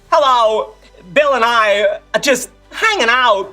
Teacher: The staccato delivery, the random dramatic emphasis, the Kirk-style pauses that make sentences feel Shakespearean.